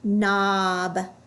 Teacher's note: It also has a KN. The K is silent. We just hear the N.